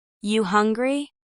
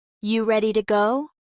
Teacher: Even though there's no R at the beginning, the rising tone at the end tells us it's a question